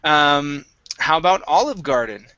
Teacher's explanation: Olive Garden, we're going to stress olive at the beginning.